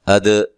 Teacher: دال پہ قلقلہ کرنا ہے